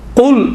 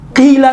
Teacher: قل موٹا تلفظ ہوا, قیلا یہاں پر قیلا نہیں کہیں گے ہم, قیلا بالکل باریک تلفظ ہوتا ہے کسر کے صورت میں, زیر کے صورت میں.